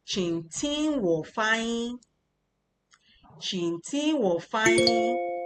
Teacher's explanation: Qing is still the third tone. Ting is the first tone.